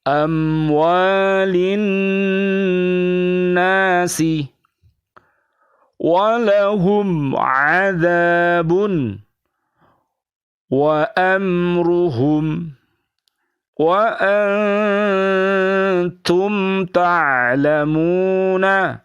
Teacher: Membunyikan mim sukun secara terang di bibir atau mulut tertutup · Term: idhar syafawi